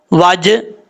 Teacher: اس کے بعد والا ورڈ ہے واو زبر جیم، وج، ہا پیش ہو، وج ہو، لیکن ہا کو جب آگے والی لائن کے ساتھ کنیکٹ کریں گے تو وہاں پہ لام ہے، لام کے ساتھ کنیکٹ کریں گے۔ جیم ساکن ہے، حروف قلقلہ میں سے ہے، قلقلہ کر کے پڑھنا ہے